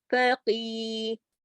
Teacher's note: کاف کو تھوڑا موٹا بھی پڑھیں گے اور کھینچیں گے